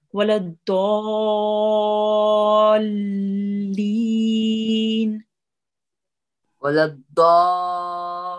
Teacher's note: try to prolong the da for a bit longer here because we have a madde kabir and you did right to press on the lam a bit.